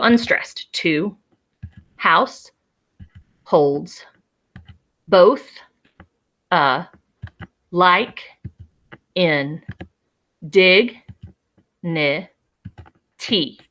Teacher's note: it consists of two syllables and the syllable stresses have to go in a certain order unstressed stressed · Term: iambic foot